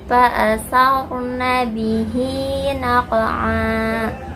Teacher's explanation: huruf ro-nya dibaca tafhim atau tebal karena sebelum ro sukun ada harokat fathah